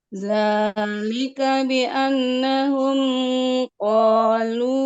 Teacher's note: Ingat nun tasdid dibaca dengung.